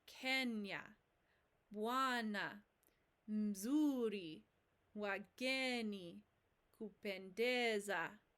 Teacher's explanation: the stress in a Swahili word comes on the penultimate or second to last syllable,